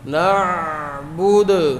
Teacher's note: عین پہ کلکلہ نہ ہو، عین کی آواز جاری ہوگی